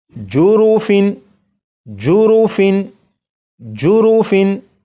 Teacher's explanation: اسی طرح یہاں پر فا کے نیچے تنوین ہے، اب یہ جو تنوین ہے تنوین کے نون ساکن کو ظاہر کر کے پڑھوں گا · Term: اظہار